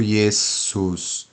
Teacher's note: O S possui o som de S, desvozeado. Pode-se flexibilizar para um som levemente vozeado quando o S está entre vogais.